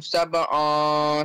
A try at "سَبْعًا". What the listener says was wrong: سَبْعًا, make your lips wider. سَبْعًا, not on, it's an. An, say an. سَبْعًا. Yeah, your lips will be in this shape. سَبْعًا.